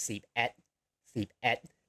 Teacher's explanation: Et is also a low tone, just like nung.